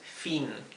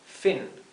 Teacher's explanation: Es una I más cortita y más cerrada.